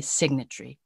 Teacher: as if there is no o between t and r